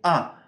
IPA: æ